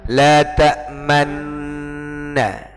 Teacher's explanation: Yang namanya ishmam itu pokoknya kedua bibir moncong ke depan, ya, tanpa menutup.